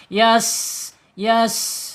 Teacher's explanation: Kemudian sifat yang tidak berlawanan yaitu saofir ya. Sin ini mempunyai sifat saofir. Saofir itu ada suara desis mendesis